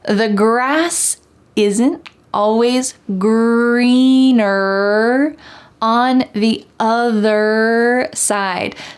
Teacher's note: don't forget that hard R sound in the word greener at the end, and also in the word other. Having that strong colored R sound at the end of the word is essential in American English.